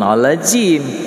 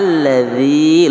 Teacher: lembut adza, keluar ujung lidah sedikit